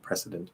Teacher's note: like president, but with a S instead of a Z sound